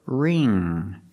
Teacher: is silent so we use the r sound r r ring the ing makes the long e sound like green beans so together ring and the NG makes the nasal sound there's · the NG makes the nasal sound there's no G sound